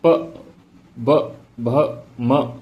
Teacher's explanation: ये ओठ दोनों छू रहे हैं